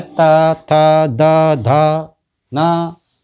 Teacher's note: ता वर्ग के देखिए ये है दंती, दांत, उच्चारण स्थान है दांत। इसमें ता वर्ग के वर्णों को बोलने के लिए जीभ को दांत से लगाना पड़ता है